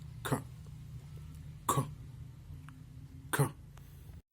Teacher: Ka. It's velar because you use the velum of your palate and it's plosive.